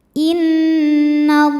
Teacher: Kemudian di atasnya ada tanda waqaf namanya al-waqfu aula, berhenti lebih utama. Inna, ada hukum gunnah musyaddadah karena nun bertasydid. Cara bacanya dengung.